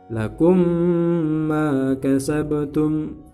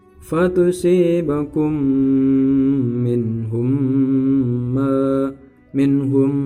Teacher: Mim mati bertemu dengan mim, masuk dengan dengung. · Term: idgham mutamatsilain